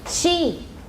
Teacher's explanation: She is a palato-alveolar.